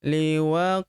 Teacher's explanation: huruf qof berharakat sukun kita pantulkan atau kita qalqalahkan · Huruf ha kita panjangkan dua harakat karena terdapat tanda alif di depannya